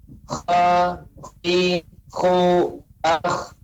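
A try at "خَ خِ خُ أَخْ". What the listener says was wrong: Nah, adapun pengucapan kurang tepat. Jadi tidak memojokkan bibir, tetap bibir datar.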